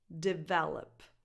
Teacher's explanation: The stress is on the second syllable. Develop. That's the strongest syllable.